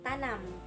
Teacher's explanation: Yang ke-20, bunyi N. Ciri-cirinya hidup, nasal, apikoalveolar. Contoh katanya tanam.